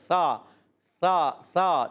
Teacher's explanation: سا پر پیش ہے، ہونٹ گول ہو جائیں گے